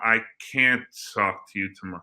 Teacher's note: But if we say can't, we're really stressing the A in can't.